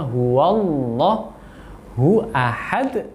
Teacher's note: sempurnakan tafkhimnya lafzul jalalah. Wawunya tidak ikut tebal tapi tetap sesuai dengan makhrajnya huwallahu ahad, kemudian pantulkan di akhirnya.